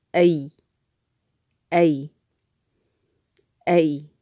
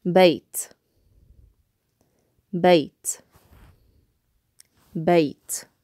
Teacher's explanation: we're stopping on the Y sound because yeah here is functioning as a consonant